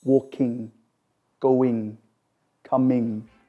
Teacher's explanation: one sound produced from the back of the mouth with the tongue at the roof of the mouth